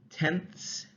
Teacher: to your tongue moves between your teeth to make it right so you're going from alveolar to interdental to alveolar